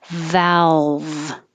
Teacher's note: your tongue tip can be down and then the middle of the tongue comes up higher to um create a dark l · I'm making my V, top teeth on bottom lip. Valve. It's easier because your tongue stays down in the front, and that gives you room to make the V.